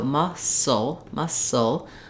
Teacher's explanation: We have a little tiny schwa sound between the S and the ul sound. I've rewritten it for you here with no vowel letter there, just because you go quickly from the S to the ul, sul, sul. · The C is silent here, and we just hear the S sound in muscle. It has first syllable stress, and the LE is a dark L at the end.